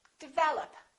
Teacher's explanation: second syllable is stressed